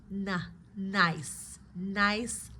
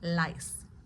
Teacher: The N is more of the entire tongue touching the upper ridge.